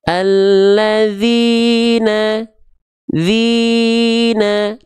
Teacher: bacaan kita flat nadanya, tapi kadarnya tetap 2 kali ayun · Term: matobi'i